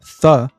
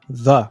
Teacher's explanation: tanto a consoante fricativa dental surda, th, como em wealth, quanto a consoante fricativa dental sonora, the, como em that. Ou seja, tanto faz qual você decide usar, elas simbolizam a mesma coisa. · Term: consoantes fricativas dentais